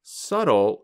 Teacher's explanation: But we do not pronounce the letter b in the word subtle.